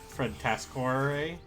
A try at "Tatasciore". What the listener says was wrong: There's two T's. It's Tata Sciore.